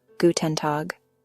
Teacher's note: The G at the end of Tag sounds more like a K.